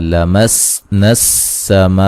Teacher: سین کو باریک سیٹی سے ادا کریں گے. ٹھیک ہے, میم پہ جو مد ہے یہ مد واجب ہے.